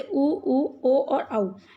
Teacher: जिन स्वरों के उच्चारण में होंठ गोलाकार अर्थात व्रतमुखी होते हैं वे व्रतमुखी स्वर कहलाते हैं, जैसे उ, ओ और औ।